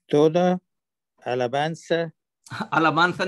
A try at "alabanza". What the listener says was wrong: नहीं, मुंह को गोल नहीं करना. स्पेनिश में मुंह को खोल के इजी फील. alabanza.